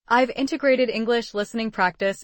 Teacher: Notice how integrated links to English and listening blends with practice. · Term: connected speech